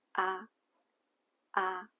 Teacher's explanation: The third tone starts low and then rises, but mostly it sounds like a short low tone, ah, ah. The fourth tone is a falling pitch, ah.